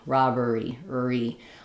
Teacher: you want to kind of start and feel that tight R happening right away in the second syllable.